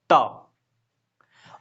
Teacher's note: जो जीभ आता है वो ऊपर वाला दांत में सटता है।